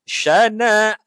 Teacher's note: hamzah ni dia di sebelum alif so hamzah ni panjang dua harakat